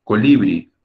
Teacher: te das cuenta de que la sílaba tónica la sílaba fuerte es la última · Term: aguda